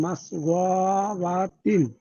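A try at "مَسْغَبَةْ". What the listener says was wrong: হুম, শেষে হা হয়ে যাবে।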